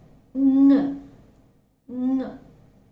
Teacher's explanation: Ng is again a voice consonant. Again, ng is a voiced velar nasal.